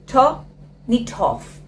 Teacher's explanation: So in this case, the consonant comes over to the next word, and that's how you can connect all these three words. Turn it off. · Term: linking method